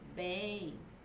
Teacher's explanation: O M não tem som de consoante, como na palavra mamão. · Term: semivogal